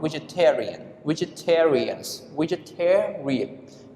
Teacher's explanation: We stress on the third syllables.